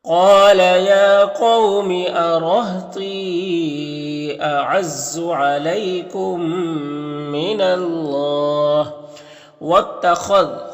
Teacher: میم ساکن کے بعد میم ہے تو ادغام شفوی ہوگا، غنہ کے ساتھ پڑھیں گے